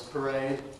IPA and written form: pəˈreɪd (parade)